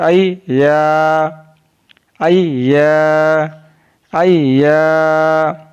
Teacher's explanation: या ज़बान के दरमियान और तालु के दरमियान से अदा होता है। · Ya is pronounced from the middle of the tongue and the middle of the palate.